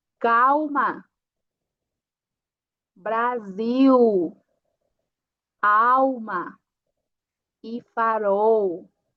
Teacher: Quando eu tenho uma L no final da sílaba, o som vai ser U